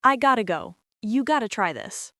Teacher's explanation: Got to becomes gotta.